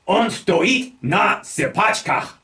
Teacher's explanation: The focus word here is sypachki, and sypachki means tiptoe. Remembering to stress the second syllable of the word for stand that we get, on stoit na sypachkach.